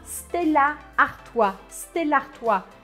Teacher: Aí a gente acaba grudando os dois As e parece que só tem um.